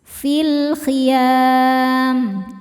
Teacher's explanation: Kemudian alif lam-nya dinamakan alif lam qamariyah karena alif lam menghadapi huruf qamariyah yaitu kha. Maka lam sukun dibaca jelas.